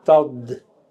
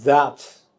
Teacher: So this you find systematically that among the dentals, the voice sound becomes voiceless, D becomes T, and the unvoiced T becomes fricative Th